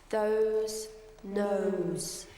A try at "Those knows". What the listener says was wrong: Let it come out of your mouth, not down here. Because if it comes down here, it's a nasty, ugly little twang.